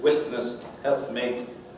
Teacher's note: where you have the likelihood, in fact, of glottalization rather than nasal release